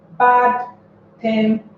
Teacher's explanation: So tem carries the stress.